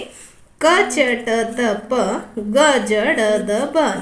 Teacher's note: ಕಡಿಮೆ ಉಸಿರು ಕೊಟ್ಟು ಉಚ್ಚರಿಸುವ ವ್ಯಂಜನಗಳು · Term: ಅಲ್ಪ ಪ್ರಾಣಾಕ್ಷರಗಳು